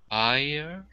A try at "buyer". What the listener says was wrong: That actually sounds like beer. Yeah, it sounds like this. Beer.